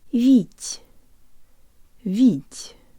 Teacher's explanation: the final te is soft, so we keep the tongue close to the roof of our mouth and use more air than we would in English. · Not vít, where the tip of the tongue touches the roof of the mouth, but the part behind the tip.